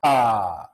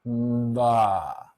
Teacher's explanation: You feel your lips release before your vocal cords start vibrating.